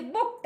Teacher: past tense maker जो है ईडी, तो उसको हम जब प्रोनाउंसिएशन करते हैं तो ट का आता है